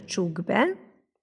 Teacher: a k és a b ugye az egyik zöngétlen a másik zöngés és ezért kiejtésben megváltozik és a k zöngéspárját fogjuk ejteni